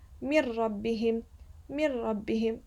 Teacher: Whereas if I read this من لدنه, there's no غنة. من ربهم, as if I pronounce it a bit quickly, like I merge it, but there's no غنة. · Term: idgham bila ghunna